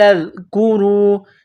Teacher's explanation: ذال کو نرم کرنا ہے، زبان کا سرہ تھوڑا سا باہر نکالیں گے ذال کو پڑھتے وقت